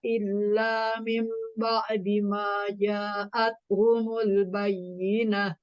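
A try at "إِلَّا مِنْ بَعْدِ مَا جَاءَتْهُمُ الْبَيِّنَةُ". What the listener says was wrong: Ya, tahan iklabnya illa mim ba'di ma ja'athumul bayyinah.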